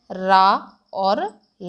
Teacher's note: अब आप कहेंगे दंतमूल क्या है, तो दंतमूल है हमारा दांत और मसूड़े। ओके, जिनका उच्चारण स्थान मसूड़ों से होता है उसे हम दंतमूल कहते हैं, और वो वर्ण है हमारे रा और ला।